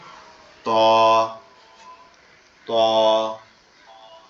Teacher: আমাদের জিহ্বার আগা সামনের দুই দাঁতের গোড়ার সঙ্গে লাগবে